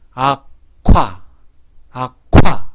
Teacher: 바람이 갑자기 팍 터지면서 침이 튀어나오죠. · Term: 격음화